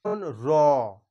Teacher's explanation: কম্পন অনুভূত হওয়ার ফলে যে ধ্বনিটা উচ্চারণ হবে সেইটাকেই বলা হচ্ছে কম্পিত ব্যঞ্জন ধ্বনি। র, এই যে রটা যখন উচ্চারণ হচ্ছে জিহ্বার একটু হালকা হলেও তোমরা কম্পন অনুভব করবে, তো সেই জন্যই এই রটাকে বলা হচ্ছে কম্পিত ব্যঞ্জন ধ্বনি।